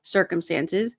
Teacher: So the first C sounds like an S.